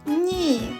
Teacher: ні Перший звук н А наступний і і пом'якше звук н тому звук н м'який а звук і голосний позначаємо кружечком